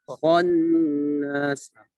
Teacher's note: Kho-nya tebal. Khannas. Tapi jangan monyong ya. Kho berharakat fathah.